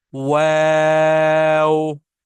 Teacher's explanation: मैंने गोल किए थे होंठ, उसके बाद मैंने होंठों को फैलाया और फिर मैं वापस अपनी जगह पे ले आया उनको